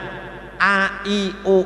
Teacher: Kemudian hamzah A, I, U, A dari bawah tenggorokan